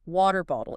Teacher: You get the flap t twice.